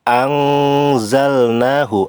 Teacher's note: Kemudian anzalnahu, ang itu dibaca samar, yaitu termasuk ikhfa, lamanya 2 harokat. Ang harus disamarkan disertai sedikit dengung, lamanya 2 harokat.